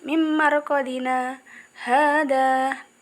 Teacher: itu bacaan sakta, jadi harus berhenti sejenak tanpa bernafas, sekedar satu alif